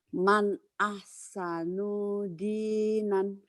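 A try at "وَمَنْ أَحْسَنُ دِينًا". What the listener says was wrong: nu ini pendek, Bu ya. Nu-nya pendek. Man ahsanu dinan.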